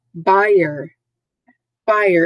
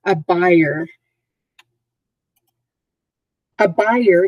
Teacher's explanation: two syllables emphasis on the first syllable